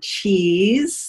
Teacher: that e sound as in keys that's your most closed sound there's air flowing through your mouth uh around your teeth but